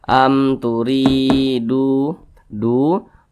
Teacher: ini huruf Ya Sukun ini di belakangnya hurufnya berbaris ke bawah maka dibaca panjang Mad Thobi'i panjangnya dua harakat atau kira-kira dua ketukan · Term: Mat tabi'i